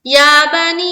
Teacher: मद है ना, या खड़ा जबर या, और बनी, या को जितना खींचेंगे उससे कई ज्यादा नी को खींचना है